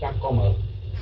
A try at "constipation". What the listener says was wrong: No, cứ nhấn cái dần đầu hoài, không phải là chắc mà là chả.